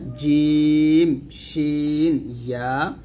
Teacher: জিম, শিন, ইয়া জিহ্বার মধ্যখান তার বরাবর উপরে তালুর সঙ্গে লাগবে